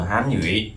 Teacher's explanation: thì từ nhủy này nó sẽ là từ mạnh hơn, trọng âm nó thường vào âm thứ hai